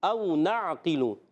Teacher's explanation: او نعقل میں واو ساکن سے پہلے زبر، تو واو لین ہو جائے گا، نرمی سے ادا کریں گے، مگر حمزہ کو خوب واضح کریں گے، تحقیق سے پڑھیں گے